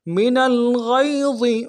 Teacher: نون کو لام کے ساتھ ملانا ہے، لام ساکن ہے، غنہ آنی ہوگا۔ غین کو موٹا ادا کریں گے، یا کے ساتھ ملانا ہے، یا لین بغیر کھینچے پڑیں گے، اور ضا کو موٹا ادا کریں گے۔